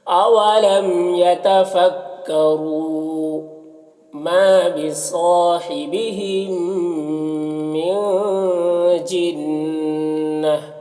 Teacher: نون میں اخفا ہوگا، نون کی آواز کو ناک میں چھپا کر پڑھیں گے۔ جنہ، نون مشدد غنہ ہوگا، اور یہاں پر گولتا ہے، وقف کریں گے تو یہ گولتا ہائے ساکنہ سے بدل جائے گی، تو پھر اس طرح سے پڑھیں گے۔